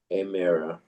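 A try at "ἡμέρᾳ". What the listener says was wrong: Don't don't don't drop that rough breather on Hemera.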